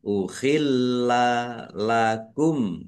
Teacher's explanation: lamnya ada tasdidnya dibaca dobel ya ditekan ya dan ditahan biar tampak dobelnya